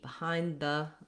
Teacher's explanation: when we say behind, we don't always release that D. Behind the, you can hear I make a bit of a stopped D.